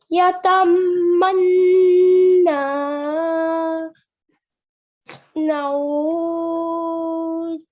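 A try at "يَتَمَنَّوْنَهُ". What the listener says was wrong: No, that's noon, not ta. That's noon here. There's one dot on top. And we don't prolong the noon. We don't prolong, we only hold the sound. We don't prolong the actual letter, okay?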